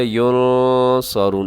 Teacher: نون ساکن ہے آخر میں اور نون ساکن کے بعد صاد، یہاں اخفا کیجیے گا